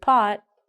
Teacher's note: So when we say the word pot, we don't say the T.